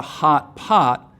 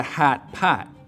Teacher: so in chicago it's not a hot pot it's a hat pat